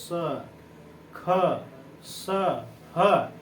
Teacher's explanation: इनका उच्चारण एक प्रकार से रगड़ या घर्षण से होता है और उसमें गर्म हवा आती है। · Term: ऊष्म व्यंजन